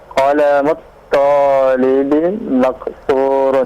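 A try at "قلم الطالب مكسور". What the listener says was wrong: Naam, sahih.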